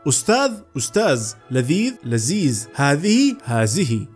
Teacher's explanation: والبعض يستبدل حرف الذال بحرف الزاء